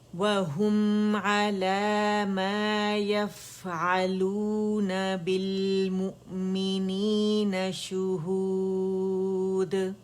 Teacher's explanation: اور ہا دمہ پہ گولائی ہوگی اور میم پہ ہم رول کریں گے